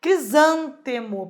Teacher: Uma palavra proparoxítona, o zan é o mais forte.